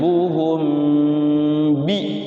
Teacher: Ikhfa Syafawi mingkem ya mulutnya bibirnya mingkem rapat